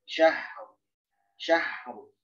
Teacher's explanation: Rokhawah itu nggak menimbulkan qalqalah. Jadi jangan dikolak-kolakan huruf H.